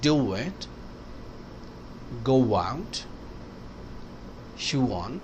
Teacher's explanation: او کی وجہ سے اور وال آئے گا تو بیچ میں انٹروژن ڈبلیو آئے گا